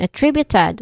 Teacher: We're going to focus on attributed, which has 4 distinct sounds. And then it starts with a, which is a schwa sound, and then trib, which is the stressed syllable here, and then u, short u sound, and then it ends with ted.